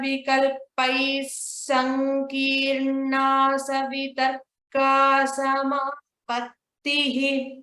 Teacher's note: we need to remove the visarga while chanting and then chant it as sa, double sa